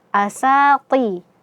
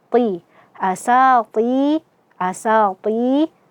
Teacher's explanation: tengah lidah kita naik ke langit-langit, sehingga menyempitnya ruangan untuk kita mengeluarkan aliran daripada huruf ta ini, sehingga aliran suaranya itu berkumpul naik ke langit-langit, dan hasil suara yang akan terdengar adalah tafkhim, tebal ya.